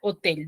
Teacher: tiene la mayor fuerza de voz en la última sílaba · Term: palabra aguda